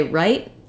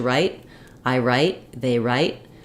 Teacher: when I say right I keep my vowel short I have an unreleased T sound